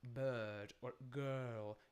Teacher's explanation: you have to round your lips it's not really an ooh and it's not an a it's in between uh so the lips are rounded but quite open uh and